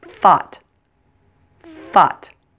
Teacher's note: the TH in thought is a voiceless TH. So for that one, do not turn on your voice box and just feel the air pushing out on all sides of your tongue